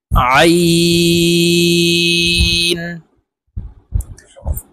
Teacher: আইন হরফ হলকের মধ্যখান থেকে চাপ দিয়ে উচ্চারণ করতে হবে, কারণ আইনের মাখরাজ হলকের মধ্যখান থেকে হবে।